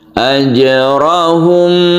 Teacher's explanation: mim mati bertemu dengan ba yang kita dengungkan jadi jangan langsung membacanya tapi ditahan dulu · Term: Ikhfa Syafawi